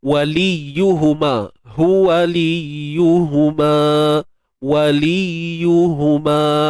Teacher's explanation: Untuk ya bersabdu ni kita baca macam biasalah, sempurnakan sabdu, cuma jangan tahan suara.